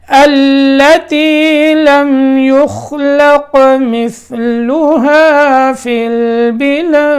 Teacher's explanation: لم یخلق یہاں قلقلہ کرنا ہے, اور البلاد میں بھی قلقلہ کرنا ہے.